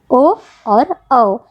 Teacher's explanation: आप उच्चारण करके देखिए, ओ और औ, इसका उच्चारण हम लोग करते हैं कंठ से भी और ओष्ठ से भी, इसलिए इसे कहते हैं कंठोष्ठीय